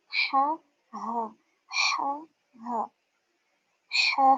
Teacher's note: ہا اقصى الحلق اس کے نیچے والا حصہ جو سینے کے قریب ہے وہاں سے